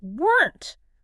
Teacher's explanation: Start with the word were and instead of opening your mouth again for the n, just immediately snap your tongue up to that ridge and bite down quickly on the n and t together. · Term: one single tight clipped syllable